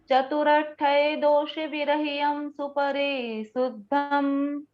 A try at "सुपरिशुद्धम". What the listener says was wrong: शुद्धमम नहीं, शुद्धम,